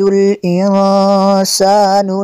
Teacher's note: نون ساکن کے بعد سین حروف اخفا میں سے یہاں پہ اخفا ہوگا اس لیے یہاں پہ غنہ کریں گے